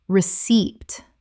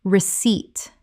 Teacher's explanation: The p is completely silent. Two syllables with the stress on the second.